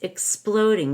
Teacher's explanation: the X in exploding is a k s don't forget the K and the s